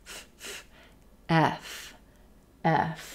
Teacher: move into the F FF consonant with our teeth resting gently on the bottom lip and air flowing between the teeth and lip